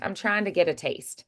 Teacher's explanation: It it's more elided and the ing would be softened. The T's are still there though. They're just a little dentalized, a little muted.